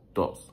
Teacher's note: like when I'm speaking fast, I don't say todos, I say dos